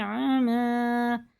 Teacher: الف ہلکا، عین حرف حلقی میں سے، آما نہیں کر دینا اسے